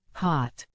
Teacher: your lips are rounded and your mouth is slightly open like when you're yawning a little